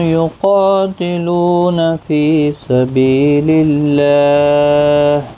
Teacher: یقاتلون قا الف مدہ ہے، لو واو مدہ ہے، دونوں کو ایک ایک الف کی مقدار کے برابر کھینچ کر پڑھیں گے۔ قاف مستعلیہ ہے، پر پڑھا جائے گا، اس کے ساتھ الف بھی آیا ہے، یہ بھی پر پڑھا جائے گا۔ یقاتلون فی سبیل اللہ، فی یا مدہ ہے، بی یا مدہ ہے، ایک ایک الف کی مقدار کے برابر کھینچ کر پڑھیں گے۔